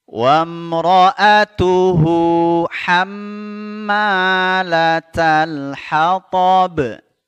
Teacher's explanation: hu ini cukup dua harakat ya, karena bertemu selain hamzah. Mad silah qasirah namanya.